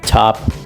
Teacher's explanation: The aspirated T, which occurs at the beginning of a stressed syllable and comes with a strong puff of air.